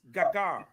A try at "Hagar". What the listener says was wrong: No, that G is silent. That G will be silent. Yeah, that G would be Hagar.